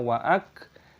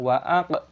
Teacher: Min fidin waak, huruf kaf memiliki tanda sukun, bacalah waak tetapi jangan qalqalah, wa aa tidak diperbolehkan karena kaf bukan huruf yang memiliki gema atau qalqalah